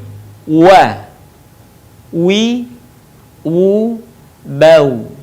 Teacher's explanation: Diucapkan dengan indhimamus syafatain atau mengumpulkan dua bibir kita. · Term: huruf wa